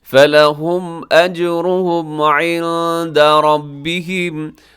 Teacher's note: عند نون ساکن کے بعد دال ہے، اخفاء کیجیے گا